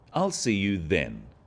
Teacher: Notice how the stress is on the word then to confirm that the time is definite.